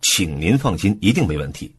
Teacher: 重音放在请上，可以强调一种客气的态度，表示尊重